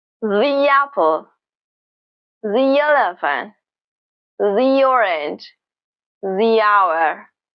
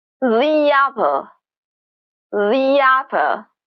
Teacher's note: Native speaker will add a little y sound between those vowel sounds.